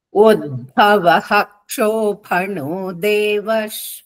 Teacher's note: విసర్గల తర్వాత క్ష ఎప్పుడు వచ్చినా కూడా ఫుల్ హ ప్రొనౌన్స్ చేయాలి